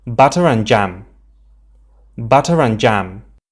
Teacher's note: In isolation, we wouldn't say the final R in butter. But as we have a vowel right after in the spelling, we actually say it to connect both words more easily. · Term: linking R